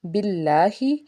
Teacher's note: اسم الجلالہ اللہ سے پیچھے زیر ہونے کی وجہ سے اس کو ہم نے نرمی سے ادا کرنا ہے